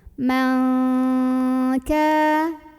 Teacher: karena huruf Kaf ini makhrajnya jauh dari Nun maka bunyi dengungnya terdengar lebih besar jadi huruf Kaf ini adalah ikhfa yang paling Ang bunyinyaamallah ada